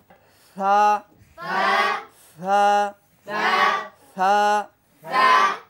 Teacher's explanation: ছা বলার সময় একটু বের হবে বাতাস বের হবে হামসের সিফাত আছে